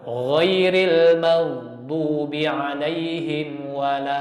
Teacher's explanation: Jadi seperti ini suaranya. Harus ada wala lamnya tipis.